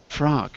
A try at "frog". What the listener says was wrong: you got to get the G sound a little more soft because it sounds like frock. Frock is a dress.